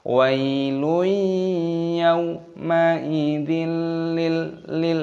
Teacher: Wailun yaum, wawu sukun dibaca yau. Ma'idil kasrah tanwin bertemu dengan huruf lam, ini hukumnya dibaca idgham bila gunnah.